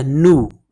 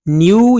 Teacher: American इसको नू पढ़ते हैं, ब्रिटिश को न्यू पढ़ते हैं